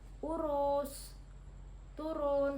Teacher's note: vokal U tinggi bawah belakang dengan posisi mulut semi tertutup